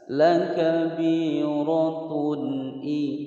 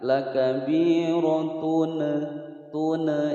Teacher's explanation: Lakabiratun i, ada dhammatain bertemu dengan hamzah. Hukum bacaan idhar, suara dhammatain dibaca jelas. Lakabiratun i, tidak boleh dengung, tung atau dipantulkan.